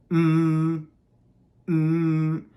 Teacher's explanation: you can feel the vibration in your throat the letter M is a voiced consonant there are certain letters in English that can't be sung these